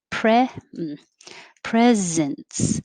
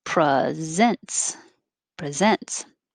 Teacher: if it's a noun then the stress is on pre pre presence but if it's a verb then it's presents presents